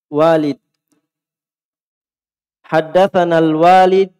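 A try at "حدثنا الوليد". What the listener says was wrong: ada alif setelah waw.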